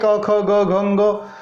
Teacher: क वर्ग का उच्चारण स्थान कंठ है।